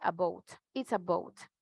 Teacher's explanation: Más suave, relajado. Así, muy parecido a la B de español, que nosotros no hacemos tanta fuerza.